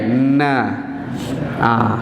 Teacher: Dia akan bunyi ikut hidung, makhraj khusyum. Kemudian baru letak kat mana, lepas kat mulut.